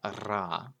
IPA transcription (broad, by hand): ara